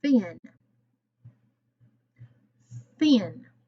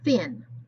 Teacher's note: It's not voiced, as in thin. Thin. This sound is spelled TH. TH, as in thin. My tongue is between my teeth. Thin. I used to tell my kids in my class that it was the rude one, because it makes you stick your tongue out.